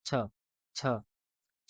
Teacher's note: हमारा जीव जो है वो तालु को टच करता है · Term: तालव्य